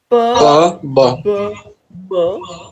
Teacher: bilabial sounds because your two lips are involved